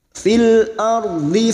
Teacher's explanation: ro sukun yang didahului fathah kita baca tafkim